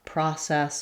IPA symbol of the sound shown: ɑ